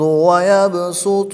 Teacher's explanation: قرآن پاک میں 4 الفاظ ایسے ہیں جو سواد سے لکھے جاتے ہیں اور ان کے اوپر باریک سین لکھا ہوتا ہے، ان میں سے یہ ایک ہے تو یہاں پر صرف سین پڑھیں گے، سواد نہیں پڑھیں گے